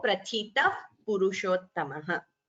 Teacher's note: Prathitaha purushottamaha. Visarga followed by pa upadhmaniya. So prathita पुरुषोत्तमः.